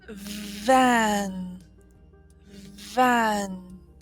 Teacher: the letter sound V like van van you will notice that when I say van my lips they do not touch they don't even come close to touching · when I say van, my lips, they do not touch. They don't even come close to touching. This is what is the most important part about the letter V.